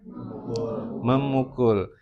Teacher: nasal em itu kan nasal bilabial